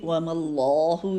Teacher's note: یہاں پہ اللہ کے نام سے پہلے میم کے پر زبر ہے تو یہ بھی لام یہاں پہ موٹا ہی پڑا جائے گا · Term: لام موٹا